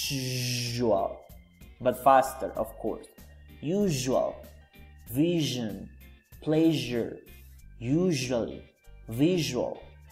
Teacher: Start by producing a long sh sound and then add the voicing j. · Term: j sound